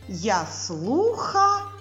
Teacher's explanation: ю а позначає вона на початку слова або Після голосного звука два звуки й у й приголосний м'який у голосний